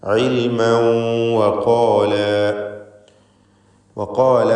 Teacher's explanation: ഇൽമൻ വഖാല എന്ന് തൻവീനിനെ ഇദ്ഗാം ചെയ്ത് വാവിലേക്ക് ലയിപ്പിച്ച് മണിക്കേണ്ടതാണ്. ഇദ്ഗാം ബിഗുന്ന നാഖിസ്.